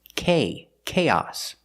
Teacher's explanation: With chaos, the stress is on the first syllable on the a sound.